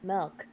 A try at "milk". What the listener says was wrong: No, it's milk, not milk. There's no E in milk.